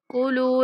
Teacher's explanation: لام کے بعد واو مدہ ہے، لام کو کھینچ کے پڑھیں گے